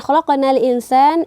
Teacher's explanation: qaf ini berada di tengah kata, maka menjadi qalqalah sughra, pantulannya lebih ringan. Khalaqana al-insan, kemudian khalaqana al-insan, ini merupakan alif lam qamariyah.